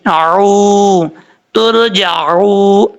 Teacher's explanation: حمزہ کی آواز نہیں آنی چاہیے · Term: عین